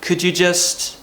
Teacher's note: especially when we're using the word could, we're going to start quite high with our tone